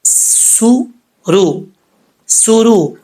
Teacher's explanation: سین حروف صفیریہ میں سے ہے تو اس کو سیٹی کے ساتھ پڑھیں گے